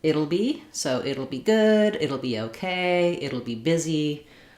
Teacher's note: In this case, we want to use it'll be rather than it will be. We contract it and will, and the T becomes a flap, and it's just like in the word middle or little. We use a flap T there and a syllabic L.